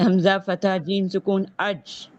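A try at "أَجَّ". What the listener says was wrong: ये सुकून नहीं है, शद्दा है।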